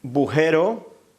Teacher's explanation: el sonido de G que se convierte en B y la pérdida de la vocal que inicia la palabra